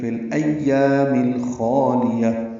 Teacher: خوا پر ہے اور یہ الف مدہ ہے، دو حرکات لمبا کریں گے، لام باریک پڑھیں گے ، یا کو تائے مربوطہ سے ملا دیں گے، ہا میں